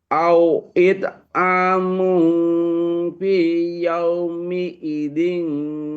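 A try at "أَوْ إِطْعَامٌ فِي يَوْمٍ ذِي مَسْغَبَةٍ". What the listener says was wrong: Oh, nggak ada i-nya. Nggak ada. Nggak ada i-nya. yauming di.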